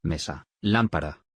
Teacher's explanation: M. Representa el sonido nasal bilabial.